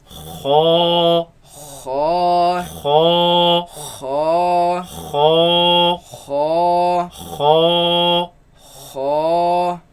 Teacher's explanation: It comes from the roots of the tongue, root of the tongue against the uvula, which is the thing that's hanging in the back of the mouth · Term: first heavy letter